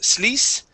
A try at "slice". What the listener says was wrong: this word here is slice. Instead of saying slice and adding an E there, okay, start with an S sound. This is slice.